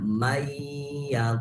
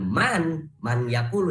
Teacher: Arti idgham biguna itu idgham yang memerlukan membacanya itu harus dengan guna. Harus dimasukkan nun dimasukkan ke iya ditambah dengan guna. Guna itu mendengung.